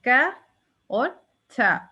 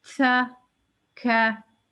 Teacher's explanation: तो काफ और था हम्स के हरूफ में से वो हरूफ हैं, वो 2 हरूफ हैं जिनको ये अगर कुरान में साकिन हालत में हो तो इन पे हम थोड़ी सी सांस अपनी रोक के और फिर विस्पर, जैसे विस्पर की आवाज आती है ना, जैसे सांस रिलीज कर देते हैं